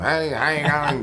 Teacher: he had a very sort of strong nasality, you know, sort of hey, kind of quality to the way he spoke.